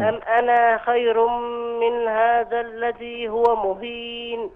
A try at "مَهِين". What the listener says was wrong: لا، الميم مفتوحة. إيه؟ مهين مهين وليس مهين. الذي هو مهين وليس مهين.